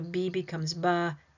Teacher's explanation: Each vowel sound, remember, is a syllable. So, when I add that extra a, which is a vowel sound, I'm creating an extra syllable